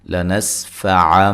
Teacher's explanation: نون تنوین کا اقلاب مع الغنہ ہے